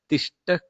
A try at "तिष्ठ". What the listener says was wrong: So Tishtha, Mahaprana of Thakara is one thing which I couldn't hear properly. Tishtha Kshanam.